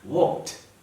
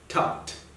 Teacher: Ed is replaced by the pronunciation t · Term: T pronunciations